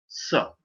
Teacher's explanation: दंती स इसलिए कि वो दाँतों के पास से बोला जाता है।